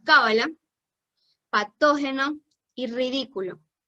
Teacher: las palabras esdrújulas son las que tienen su acento en la antepenúltima fila estas palabras siempre se acentúa es decir contando por detrás